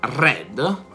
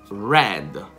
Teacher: Anziché la lingua essere sparata in direzione dei denti, la lingua deve essere fatta risalire verso il palato. Non lo deve toccare, però. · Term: suono retroflesso